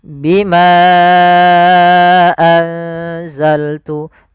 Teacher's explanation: Contoh di sini bima satu kata, anzaltu satu kata, maka bimanya kita panjangkan sepanjang empat harakat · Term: mad jaiz munfasil